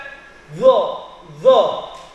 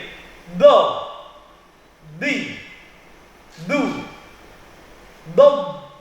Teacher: Jadi dot itu keluarnya dari tepi lidah kiri atau kanan. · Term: huruf dot